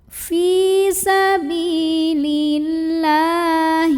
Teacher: ada baris fathah panjang pada huruf lam cara membacanya adalah dipanjangkan lamnya 2 harokat saja